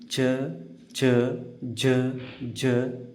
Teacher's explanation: ದವಡೆಯಲ್ಲಿ ಹುಟ್ಟುವ ಅಕ್ಷರಗಳಿಗೆ ತಲವ್ಯ ಅಕ್ಷರ ಅಂತ ಕರೀತೀವಿ